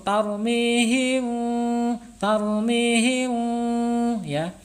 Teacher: Syafawi ya, bibirnya tertutup tetapi masih ada udara yang mengalir. Ini samar ya, karena ikhfa. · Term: ikhfa syafawi